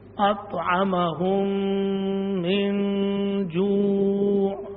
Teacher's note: ایک میم کو دوسری میں مدغم کریں گے، ایک میم کو دوسری میں مدغم کر دیں گے تو ایک میم پڑھی جائے گی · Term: ادغام مثلین